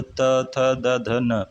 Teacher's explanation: तो त, थ, द, ध, न, ये दंत से बोले जाते हैं